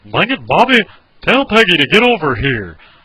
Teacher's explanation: talk at a normal guy's monotone level. And when you talk, you gotta have a southern drawl.